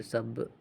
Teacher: the a sound at the final letter is eliminated so it's barrel.